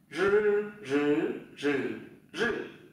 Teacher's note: Các bạn cong lưỡi và dây thanh, đây, dây thanh đây, hai cái dây thanh đây, dùng nhá, thử luôn này, đầu lưỡi cuộn lên